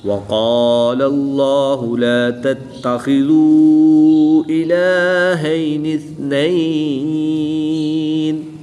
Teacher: قاف اور خا حروف مستعلیہ میں سے ہیں، ان کو پر یعنی موٹا پڑھیں گے